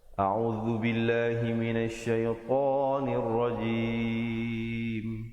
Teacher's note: To nir rajim, nun baris bawah terus naik di atas ra, dan kemudian jim berbaris bawah. Diakhiri dengan ditutupkan rapat mulut, menyempurnakan bunyi mim